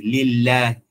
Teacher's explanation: hii lam yenye shadda utaisoma nyepesi